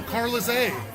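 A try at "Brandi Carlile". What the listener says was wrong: Brandy Carlisle. No, it's Carlile. There's no S. No, it's not Belinda Carlisle. Brandy Carlisle.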